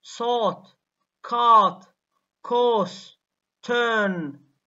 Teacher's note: in British English, ra never occurs before consonants.